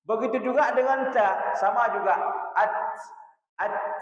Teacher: Dua pita suara terbuka, tidak ada getaran dan mengalirnya nafas. Mengalirnya udara lebih di sini sebagaimana di kitab ya. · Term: hams